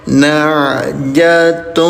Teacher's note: domahtain bertemu dengan huruf wau ya dileburkan bacaannya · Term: idgham bighunah